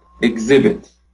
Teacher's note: both the verb and the noun forms have the same pronunciation. It is exhibit, with the stress on the second syllable.